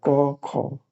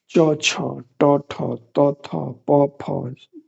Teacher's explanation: क बोलने के क्रम में कोई हमें कंपन स्वर तंत्रियों में नहीं होता। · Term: अघोष